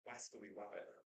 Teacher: There's an Italian actress who has a speech impediment. Her R's come out as W's